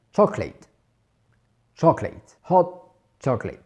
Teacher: Mais le deuxième O ne se prononcera pas. On ne dira pas chocolate, on dira bien chocolate.